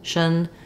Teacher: in the dictionary with an uh or an i sound but basically it's a very reduced vowel you want to move quickly from the sh to the N shun with almost no vowel there recognition if you have trouble